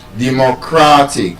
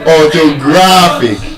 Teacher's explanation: So, orthographic stress on the penultimate syllable, second to the last syllable.